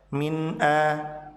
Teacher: Nun pada kata mint dibaca jelas karena setelahnya ada huruf hamzah